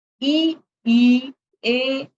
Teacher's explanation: अग्र स्वर, जिह्वा के अगले भाग से जो बोले जाने वाले स्वर होते हैं उनको अग्र स्वर कहते हैं।